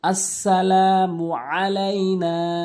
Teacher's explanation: আসসালামু আলাইনা অধিকাংশল আসসালামু আলাইনা বলে হামজাইনে উচ্চারণ করে আইনের জায়গাতে আইনটি হলকের মাঝখান থেকে আলাইনা বলতে হবে